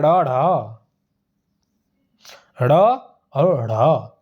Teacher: इनके उच्चारण करते समय जीभ झटके से ऊपर जाती है, इसलिए इन्हें उच्छिप्त व्यंजन भी कहते हैं।